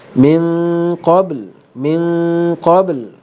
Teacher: Baik, di sini ialah nun mati bertemu dengan qaf membawa hukum ikhfa. Ikhfa di sini tebal kerana ikhfa berlaku kerana bertemu dengan huruf isti'la, huruf yang tebal, maka bunyi dia pun tebal.